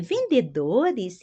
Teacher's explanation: sempre o e no final eu pronuncio uma i